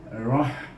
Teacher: Dibaca ra dengan tebal kerana ra baris di atas.